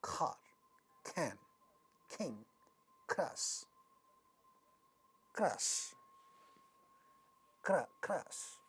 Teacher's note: ka at the initial position will also become aspirated, and it is going to sound like car, can, king, crush, crush, crush.